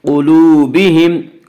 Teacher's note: قاف حروف مستعلیہ میں سے ہے۔ حروف مستعلیہ 7 ہیں جو ہمیشہ ہر حال میں پر پڑھے جاتے ہیں، اس لیے قاف کو پر پڑھیں گے۔ قلوبہم، واو مدہ، واو مدہ اس واو کہتے ہیں جو واو ساکن اس سے پہلے پیش ہو، واو مدہ کو ایک الف کے برابر کھینچ کر پڑھیں گے۔